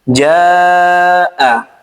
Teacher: Ja di sini dibaca empat harakat karena alif didahului fathah setelahnya ada hamzah. Nah, kalau kaidah tajwidnya disebut dengan mad wajib muttasil panjangnya empat harakat.